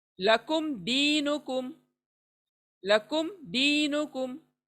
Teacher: تو یہاں میم کی آواز کو صاف پڑھیں گے، ایک دم کلیئر،